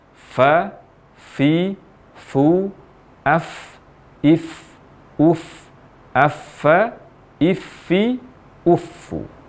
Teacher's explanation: Sehingga pengucapan huruf fa dengan mempertemukan antara ujung dua gigi seri atas dengan bibir bawah bagian dalam adalah fa, fi, fu, af, if, uf. Dan saat mengucapkan huruf fa ini disertai dengan hamas atau aliran nafas yang menyertai huruf fa